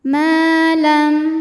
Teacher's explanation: ma Mad Thobi'i dahiri sebab ada Alif yang sebelumnya berbaris fathah maka huruf mim panjang dua harakat